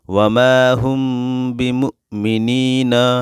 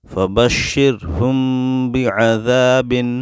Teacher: میم ساکین کے بعد با ہے، میم پہ غنہ کر کے پڑھیں گے